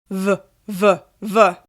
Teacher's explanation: Yes, you can feel your voice box vibrating on the v sound.